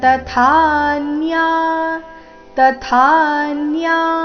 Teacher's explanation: ತ ಆದ ನಂತರ ಥ ಮಹಾಪ್ರಾಣ ದೀರ್ಘ